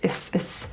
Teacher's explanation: Is has a Z pronunciation, is rather than an S